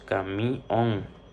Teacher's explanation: en la palabra camión, la sílaba que suena más fuerte es mión. Por eso decimos camión. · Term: sílaba tónica